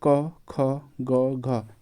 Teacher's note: क ख ग घ ये कंठ से बोले जाते हैं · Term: कंठ ध्वनियां